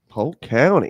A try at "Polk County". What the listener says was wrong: And by the way, you're pronouncing it wrong. It's not Polk County. You have to say it as one word. P-O-C-A-N-N-Y. Polk County. That's how we pronounce it.